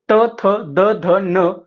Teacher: दाताला जिभेचा स्पर्श होऊन उच्चारल्या जाणाऱ्या वर्णांना आपण काय म्हणतो, दंत्यवर्ण म्हणतो